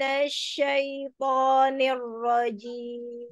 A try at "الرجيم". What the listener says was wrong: Enggak ner, enggak ner, tapi lurus. Nir, nir, ro, nir, rojim.